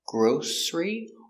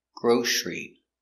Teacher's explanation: With the S, grocery, or with a sh, grocery. Both are correct.